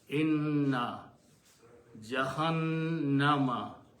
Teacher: the first sound of the noon is just like a noon, but the second sound turns into a sound of gunna